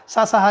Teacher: ऊष्म व्यंजन है क्योंकि इसके उच्चारण करने से रगड़ होती है रगड़ से ऊष्मा पैदा होती है है ना साधु लोग वैसे भी खणु होते हैं उष्म होते